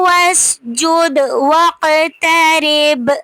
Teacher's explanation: کلا پہ الف مدہ لا پہ الف مدہ تطیعہ واسجد دال پہ قلقلہ ہو رہا ہے. وقترب پہ بھی کاف پہ بھی قلقلہ ہو رہا ہے اور با پہ بھی قلقلہ ہو رہا ہے